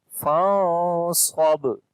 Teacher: We hide the sound of noon into our nose, as we say fasab. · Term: ikhfa sound